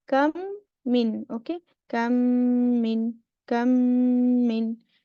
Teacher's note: we insert the meme sakin into the meme with a vowel which acquires a shadda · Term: idgham